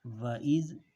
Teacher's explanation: ینظرون ینظرون۔ وَإِذْ، دال کو زبان نکالنی ہے دال پہ